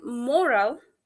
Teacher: this stress is on the first syllable